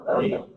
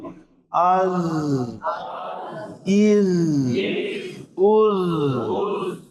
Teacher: شدت کا معنی آواز بند ہونا، آواز تو بند نہیں ہو رہی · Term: صفت صغیر